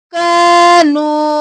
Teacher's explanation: کانو الف مدہ واو مدہ دونوں کو کھینچیں گے